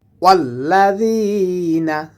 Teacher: জালটা জিহ্বার আগা থেকে নরম করে উচ্চারণ হবে এবং জেরের বাম পাশে জজমেলা ই আসার কারণে এক আলিফ টেনে পড়তে হবে।